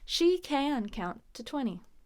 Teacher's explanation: Notice 20, we skip that last T.